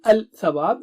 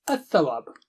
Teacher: You have to move the tongue tip quickly because the makharij of tha and lam is the same, the tongue tip. To make it easy, we sacrifice lam and shadda is placed on tha. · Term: Lam is sacrificed